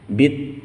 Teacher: kasroh bertemu dengan ya sukun, kemudian terletak pada akhir ayat, maka panjang hingga 6 ketukan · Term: mad arid disukun